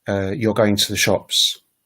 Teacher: the statement you're going to the shops is a sort of falling kind of intonation